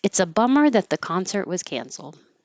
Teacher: No T on concert, just hold the tongue there.